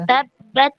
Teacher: ta ini dia itu kan ada syiddahnya, ketahan dia, tapi dia juga punya hamas. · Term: syiddah mahmusa